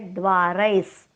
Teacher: द्वारैस दोन्ही अक्षर दीर्घ आहेत